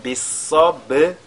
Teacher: Donc bis-sa et la lettre sad qui est avec at-tafrim, le ba qui suit qui est sakina, on fait donc al-qalqala sur ce ba